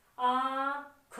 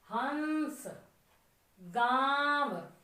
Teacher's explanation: अब जैसे हम कहें अनुनासिक शब्दों में चंद्र बिंदु हम लगाते हैं, हमने लिखा आंख, आंख के ऊपर चंद्र बिंदु, आंख। अब देखो आ, नाक से आई आवाज, ख मुंह से आ गई, आंख, मतलब नाक और मुंह दोनों से निकलती है हवा